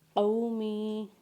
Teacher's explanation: قاف کو واولین کے ساتھ پڑھیں گے اور میم کو یا کے ساتھ پڑھیں گے، یا مدہ کے ساتھ پڑھیں گے اور یا مدہ کے ساتھ پڑھتے ہوئے میم کو ایک الف کے برابر کھینچیں گے